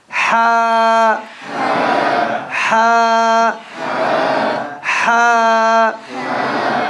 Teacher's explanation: where does the Hat come from middle of the throat